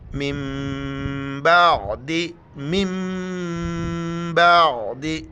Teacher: نون میم میں تبدیل ہو جاتا ہے، وہاں پر ہمیں پھر ناک میں آواز چھپانی ہے